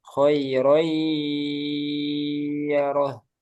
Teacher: kalau yang ada gunanya, khairai, ada masuk hidungnya.